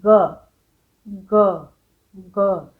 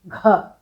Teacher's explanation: साथ हवा निकालेंगे घ फौरन कागज उड़ जाएगा घ इसका मतलब पहला अक्षर बिना हवा के बोलना होता है और दूसरा अक्षर हवा निकाल कर उसी तरह बोलना होता है